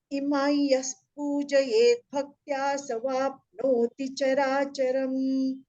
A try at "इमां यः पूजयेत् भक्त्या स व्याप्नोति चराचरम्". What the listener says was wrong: There is a dvitva, savya. Savyapnoti, not sava. Savyapnoti.